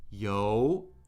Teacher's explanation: Yo, rising tone. That means squid.